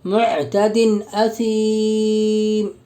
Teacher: دو زیر کی تنوین کا حمزہ میں اظہار حلقی ہوگا، یعنی بغیر غنہ اور اخفا کے جلد پڑھیں گے